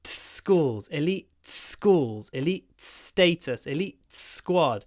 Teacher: But when I say elite schools, I kind of do a schools, elite schools, elite status, elite squad. You can hear the t, but it's connected to the s.